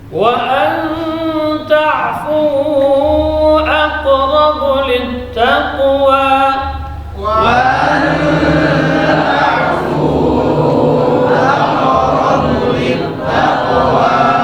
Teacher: Huruf waw di sini rakhawa dan jar, dan hamzah syiddah dan jar, nun sukun temu dan ta ikhfa, ya dibaca tipis.